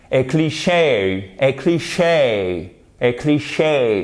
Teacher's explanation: vous avez l'accent tonique sur la seconde syllabe, ce qui renforce encore plus le côté anglophone.